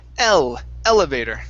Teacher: so the stress is at the very beginning